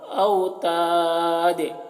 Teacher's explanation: دیکھیے دال کی آواز میں ایک قسم کی جنبش ہو رہی ہے, اسی کو قلقلہ کہتے ہیں